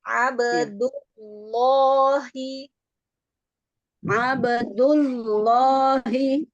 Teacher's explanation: menebalkannya gitu pangkal lidahnya angkat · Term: tebalkan